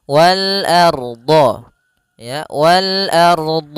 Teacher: Wal ardho a tipis ronya tebal